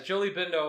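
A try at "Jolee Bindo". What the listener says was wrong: Bindu. There's no it's a U.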